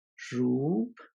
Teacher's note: this vowel pattern is pronounced as i said with the rising tone and ends higher than it starts off